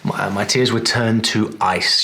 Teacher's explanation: if you were speaking in this way, you probably wouldn't contract the to into a t like that.